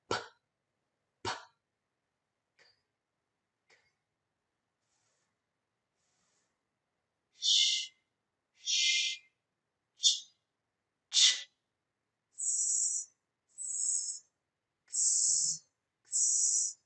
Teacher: You shouldn't feel any vibration. That's because those sounds are voiceless.